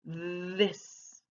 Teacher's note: my tongue is still between my teeth but there's a little vibration